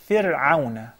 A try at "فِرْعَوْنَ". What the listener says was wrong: A little more thinner. The ra. فِرْعَوْنَ.